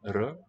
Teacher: the alveolar trilled R, r, it's quite a different effect from the vocalic German R that I'm used to there.